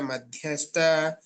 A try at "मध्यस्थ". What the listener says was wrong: So your dha is good. Madhyastha you said, but sta and this one, this place. All Mahapranas, please correct them.